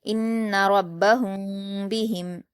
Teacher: آیا ہے تو یہاں پر اخفاء شفوی کا قاعدہ ہوگا، تو میم ساکن کی آواز کو چھپا کر غنہ اور اخفاء کے ساتھ پڑھا جائے گا · غنہ میں 1 الف کے برابر یہاں پر ناک میں آواز کو ہولڈ کر کے رکھا جائے گا